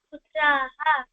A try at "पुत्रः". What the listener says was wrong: Hello, புத்திராஹ இல்லமா, புத்திரஹா பார்த்து சொல்லுமா. ஏகஹ புத்திரஹ,